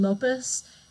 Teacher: it all sounds like an s because there's no z sound in spanish